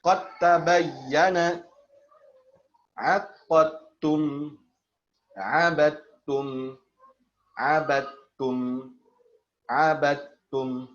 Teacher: Dalnya diidghamkan ke dalam huruf ta secara kamil. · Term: Idgham kamil